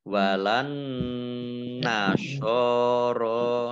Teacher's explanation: nun tasdid dibaca gunnah atau mendengung ditahan kurang lebih 2 harokat